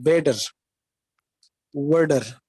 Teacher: when they will find two t sounds together they actually make it as da